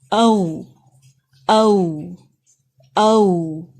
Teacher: सिर्फ और सिर्फ आपके लिप्स राउंड होंगे